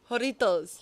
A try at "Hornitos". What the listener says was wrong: Hornitos. You gotta roll the R. Hornitos.